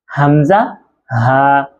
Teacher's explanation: এই দুটি হরফ হচ্ছে হলকে শুরু হই। অর্থাৎ কন্ঠনালী শুরু হইতে উচ্চারিত হয়। তবে দুটি হরফের উচ্চারণ আবার এক হবে না।